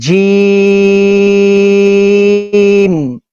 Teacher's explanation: اس کا آسان طریقہ ہے کہ جو زبان کا سینٹر ہے نا, زبان کے سینٹر کو اوپر کے تالو کی طرف تھوڑا سا اٹھائیں گے تو یہ منہ کے اندر پڑا جائے گا